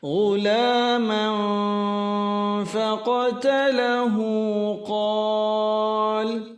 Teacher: Man ini ikhfa hakiki disamarkan, dan ketika mengikhfakan huruf fa maka bibir dibuka sedikit membentuk bulatan kecil, disebut dengan istilah furjah.